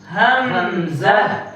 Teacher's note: ایک ہی جگہ سے یہ ادا ہوتے ہیں، گلے کے اسی حصے سے جو سینے کے جانب ہو۔ حمزہ ہا ادا ہوتے ہیں گلے کے اسی حصے سے جو سینے کی جانب ہو · حمزہ کے آخر میں ہا کی آواز نکالنی ہے